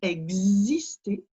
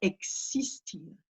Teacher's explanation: Donc, jamais de son Z qui apparaît.